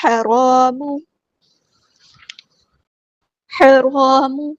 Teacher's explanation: الف مد آیا 2 کاؤنٹس ہم یہاں پہ لمبا کریں گے · میم کی پیش کو ہم لمبا نہیں کریں گے · یہاں پہ لام قمریہ، اس کو ہم ظاہر کریں گے، ہا کو وسط ہے لیکن مڈل تھروٹ سے ادا کریں گے · کو وسط ہے لیکن مڈل تھروٹ سے ادا کریں گے، اور را ہمارا ہیوی لیٹر ہے، پورا ادا کریں گے